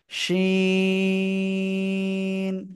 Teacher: জিহ্বার মধ্যখান তার বরাবর, জিহ্বার মধ্যখান তার বরাবর উপরে তালুর সাথে লাগিয়ে শা শা শব্দ করে আমরা এই অক্ষরটা উচ্চারণ করব।